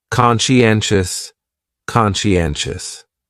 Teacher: conscientious has four syllables and the stress is on that third syllable.